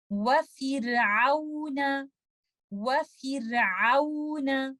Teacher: इस एग्जाम्पल में हम देखते हैं लेटर र साकिन है और उससे पहले आने वाले लफ्ज के नीचे कसरा या जेर है और उसके बाद आने वाला लेटर क्योंकि एक हैवी लेटर नहीं है तो ये लेटर र तरकीब के साथ या लाइट ही पढ़ा जाएगा, इसको हम हैवी नहीं करेंगे